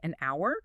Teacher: Since the H in hour is silent, the very first thing you actually hear is that O's sound. Oh, which is a vowel sound.